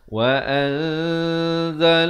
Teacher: lafz jalalah dibaca tebal 2 harakat